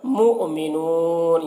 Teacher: یہاں پر حمزہ ساکنہ ہے، جھٹکا لگے گا